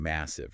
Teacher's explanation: The physical act of pronouncing massive requires more effort. The heavy M sound at the beginning forces your lips to press together, creating pressure.